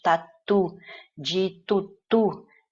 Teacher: olha o U de tatu, de tutu, é uma pronúncia bem mais aberta